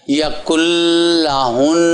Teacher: نون کی آواز نہیں آئے گی